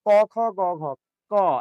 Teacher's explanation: এবার দেখেন ক, খ, গ, ঘ, ক, এই যে দেখেন আপনার এই জিহ্বার গোড়াতে আটকে যাচ্ছে বাতাসটা এসে। আটকে যাওয়ার পর যখন আপনি ছেড়ে দিচ্ছেন, তখন বলছেন ক, খ, গ, ঘ, ঠিক আছে? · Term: কণ্ঠধ্বনি